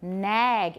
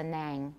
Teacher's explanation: a short front vowel followed by a voiced velar sound and in many varieties of english including mine we get velar raising so nag if it were ng it would be nang nang